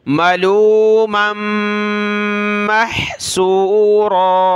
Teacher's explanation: میم کو ملا اس میم کے ساتھ اور میم کو ہا کے ساتھ، ناک میں آواز پیدا ہوگی